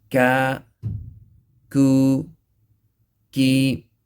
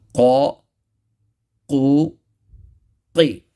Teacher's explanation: similar to qaf but away from the uvula. So qaf is pronounced from the uvula and the soft palate, right? But kaf is pronounced from the soft palate. So make sure that, not to touch the uvula.